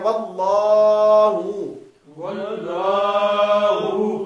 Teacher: لفظ اللہ کا لام موٹا ہوگا واو پہ زبر کی وجہ سے